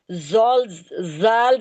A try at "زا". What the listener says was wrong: زال نہیں ہے، زا ہے یہ۔